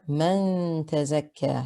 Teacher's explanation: You hide the noon into the ta and you hold the ghunna for 2 counts. The kaf has a shadda, make sure you observe it, and the alif at the end is a natural mud extended for 2 counts. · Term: ikhfa haqiqi